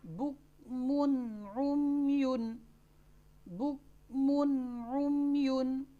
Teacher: कायदा पहले पढ़ लें कि नून साकिना नून तनवीन के बाद, यहाँ पर नून तनवीन के बाद हरूफ हल्की में से आइन आ रही है, तो यहाँ पर हमने नून साकिन या नून तनवीन, यहाँ पर नून तनवीन है तो उसको बगैर गुन्ना के ज़ाहिर करके पढ़ेंगे।